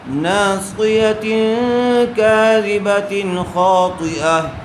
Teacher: تنوین کے بعد حروف اخفا میں سے کاف آیا ہوا ہے، اس لیے غنے کے ساتھ اخفا کر کے پڑھیں ہیں۔ کاذبۃ، یہاں تنوین کے بعد حروف حلقی میں سے خا آیا ہوا ہے، اس لیے بغیر غنے کے جلد اظہار کر کے پڑھیں گے۔